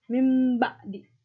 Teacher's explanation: cara membacanya adalah bunyi nun mati atau tanwin berubah menjadi bunyi mim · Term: iklab